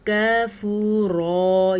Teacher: یہ باریک کاف ہے، اس کو غلطی سے بھی آپ نے موٹا کر کے نہیں پڑھنا